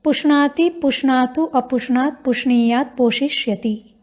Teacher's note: इस धातु में मूर्धन्य श सुनाई पड़ रहा है, तो उसके बाद भी नकार को णकार हो जाता है